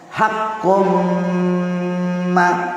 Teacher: tanwin bertemu dengan mim, dari tanwin siruntu mim, namanya idgham bigunnah. Caranya membaca ini berdengung